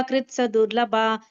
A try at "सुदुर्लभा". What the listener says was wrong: சுதுர்லபா, சதுர்லபா இல்ல, சுதுர்லபம், ரொம்ப துர்லபம், சுதுர்லபம், ரொம்ப அரிதானது.